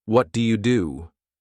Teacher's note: There's a soft ch sound that appears in the middle. This is a way to make your speech smoother, and it's what native speakers do.